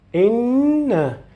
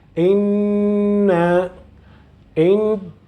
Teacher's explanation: Because I am prolonging the Gunnah from the nose.